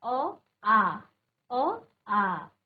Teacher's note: अ और आ दोनों में अंतर यही है कि एक को हमने उच्चारण करने में ज्यादा समय लगाया और एक को कम समय लगाया। अ आ अ आ दुगना समय लगता है।